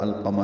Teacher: والقمر میں الف لام، وہاں پہ لام پڑھا جا رہا ہے، وہ اظہار قمری ہے